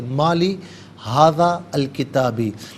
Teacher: مالی ہاذا الکتابی، ہاذا میں ناظرین دال پر زبر، اس سے الکتابی کے لام ساکن کے ساتھ ملائیں گے، درمیان میں سے الف یعنی حمزہ کو حذف کیا جائے گا